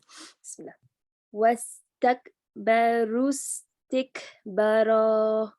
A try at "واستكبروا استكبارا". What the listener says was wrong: No, stretch the ba as well. Wastakbaru istikbara. What you're saying is wastakbaru istikbara. So the ba is not being stretched. So complete the stretching the ba.